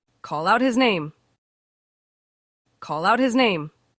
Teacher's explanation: that H in the middle of sentences normally not pronounced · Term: link